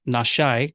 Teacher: further west you go, the more common it is to drop proleptic alephs, or these A sounds that come in front of words